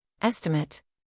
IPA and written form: ˈestɪmeɪt (Estimate)